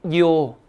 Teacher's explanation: 이자가 굉장히 짧게 소리 나야 됩니다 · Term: 이중모음